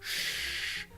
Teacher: R and s create a retroflex sound